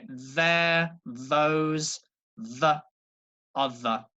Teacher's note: my tongue comes through my teeth but not very hard just very soft and gentle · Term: soft sound